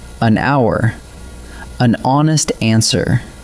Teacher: hour and honest start with a silent H. So what your ear actually catches is a vowel, and that is why they take an.